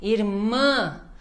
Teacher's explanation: o IR-MÃ, tem que dar ênfase no MÃ